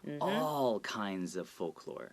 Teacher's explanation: So here when I read it, because it's a lot of different kinds of trouble, I would make sure to emphasize all by dragging it out